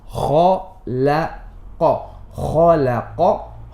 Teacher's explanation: So kha is heavy, qaf is heavy, but the lam is flat. So you make the transition.